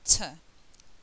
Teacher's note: okay T so it will actually touch the ridge there now T is an unvoiced consonant um no vibration of the vocal cords and there's strong air flow